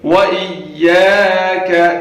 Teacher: یا کو کھینچ کے پڑھیں گے، الف مدہ ہے، اور کا یہاں پہ چھوٹا کیف ہے، کا یہ آواز نکلنی چاہیے.